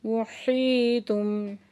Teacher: یا ساکن سے پہلے زیر ہے تو یا مدہ دو حرکت کھینچ کے پڑھ رہے ہیں ہم